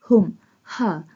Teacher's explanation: ha pronounced from the bottom part of throat.